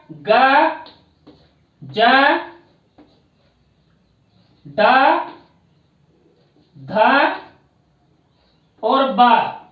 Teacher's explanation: ये संवार, नाद, घोष और अल्प प्राण के अंतर्गत बोले जाते हैं।